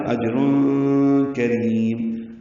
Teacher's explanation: تنوین کے بعد کاف آنے کی وجہ سے یہاں پہ اخفا ہے · کاف آنے کی وجہ سے یہاں پہ اخفا ہے، اجر کریم، کاف را باریک ہیں، را کو لمبا کریں گے